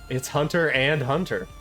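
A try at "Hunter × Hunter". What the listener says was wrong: No, you don't say the X. It's just Hunter. Well, I mean, I guess you can.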